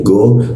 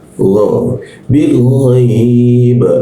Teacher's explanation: Go itu suaranya dari depan sini, go. Tapi kalau gho, D, G, O, tapi asalnya dari atas jakun.